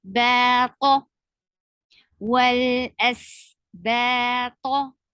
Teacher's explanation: make sure you make and keep ba light and ta heavy, because whenever the heavy letter comes beside any letter, we tend to make the other letter heavy too.